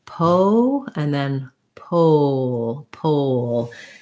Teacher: going from that rounded again to the unrounded schwa before your dark l you're going to have a little bit of a w sound gliding